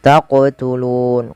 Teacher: qof wajib dipantulkan karena ia ada bacaan qalqalah